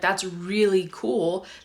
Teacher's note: in english at least the way i speak it we do not roll the r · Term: not rolling the r